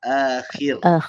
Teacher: huruf kha ni dia walaupun sifat dia isti'la, tapi dia ada satu lagi sifat, nama dia infitah. Dia terbuka. So bila dari bawah tu tak perlu muncungkan mulut.